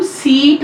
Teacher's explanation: Front close अनराउंडेड vowel है हमारा, जैसे कि हम सीट में बोलते हैं।